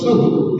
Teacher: तो स्वस्तिक क्रियासु परम, और सु में भी जो है विसर्ग है, तो सुह यानी वहां पे श्वास को छोड़ दे, थोड़ी देर का एक हल्का सा कौमा जैसा वहां पर हो जाए